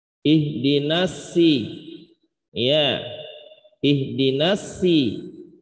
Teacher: Nah, huruf shad kadang dibaca dengan sin tipis.